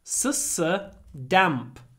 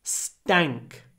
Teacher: we don't pronounce t with aspiration like we usually do so we say for example tank but stank tank stank tank